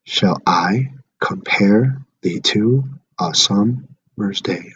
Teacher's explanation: I'm unstressing the first part and stressing the second part. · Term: iambic pentameter